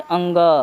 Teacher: इसको हम लोग नासिका व्यंजन भी कहते हैं। क्यों कहते हैं, क्योंकि इसको नाक से बोला जाता है। जैसे अंग, देखिए नाक से बोला जा रहा है, य।